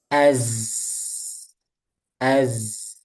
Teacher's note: Udaranya tertahan. Yang ngalir suaranya aja. Jadi dia rakhawah dan jahr. Ya, rakhawah suaranya ngalir.